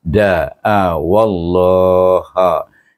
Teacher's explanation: Itu idgham syamsikan waw kepada kalimah Allah yang bermula dengan alif lam syamsiah, iaitu lam jalalah itu adalah alif lam syamsiah. Maka kita baca dengan tebal kerana waw berbaris alif.